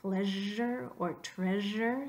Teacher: similar to the S with the hat but it's voiced